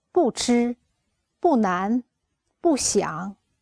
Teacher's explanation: When 不 is alone or before the first tone, the second tone, and the third tone, we read 不, the fourth tone.